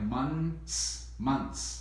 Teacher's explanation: we don't really say the th sounds so much it's more like months months once yeah m-u-n-s months okay but